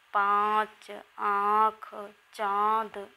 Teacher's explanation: अनुनासिक इनका उच्चारण नाक और मुख के संयोग से होता है।